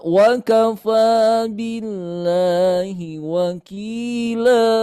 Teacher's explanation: Ini cara bacanya kita baca dua harakat ya. Hati-hati tidak bablas menjadi empat atau tiga atau lima. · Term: mad iwad